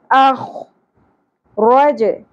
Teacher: کھینچنا ہے احینا و اخ پر لیٹر ہے ہیوی لیٹر ہے پر حرف ہے اس کو ہم نے پر کرنا ہے اور خراش خردرا پن کلیئر ہونا چاہیے اخ رج ر پر ہوگا جیم ساکن پہ قلقلہ ہوگا رج